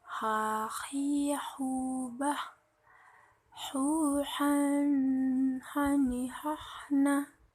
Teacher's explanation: Melafalkan huruf H dikeluarkan dari tenggorokan yang terjauh.